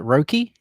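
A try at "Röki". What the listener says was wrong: So you have to say it like you're from Hull. So it's Rurky. The O with the umlaut is like an sound. So it's like Rurky.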